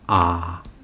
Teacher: इनके उच्चारण में मुंह सबसे अधिक खुलता है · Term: विवृत स्वर